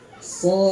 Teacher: Belakangnya dal, dipantulkan d. Jadi yang dipantulkan itu bukan huruf shad, tapi huruf dal.